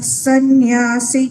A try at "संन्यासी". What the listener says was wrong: બરાબર, રાગ બરાબર છે. સંન્યાસીમાં સી દીર્ઘ છે.